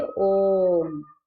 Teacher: इनके उच्चारण में ह्रस्व स्वरों से 3 गुना समय लगता है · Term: प्लुत स्वर